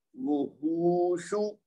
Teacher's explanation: یہ واو جو ہے اس کو 1 حرکت دینی ہے، شین کو بھی 1 حرکت دینی ہے، لیکن ہا کو 2 حرکت دینی ہے